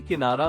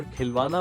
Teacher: किनारा में की पर और खिलवाना में वा पर जोर पड़ता है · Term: शब्द बलाघात